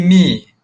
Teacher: hilangkan sebutan nun daripada min jadi mi